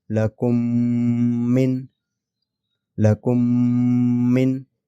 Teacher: یہ میم اس میم میں جذب ہو جاتا، ٹھیک ہے، مرج ہو جاتا غنے کے ساتھ · ادغام شفوی ہوگا، یعنی یہ میم ساکین میم مشدد میں، اس میم مشدد میں داخل ہوگا، جذب ہوگا غنے کے ساتھ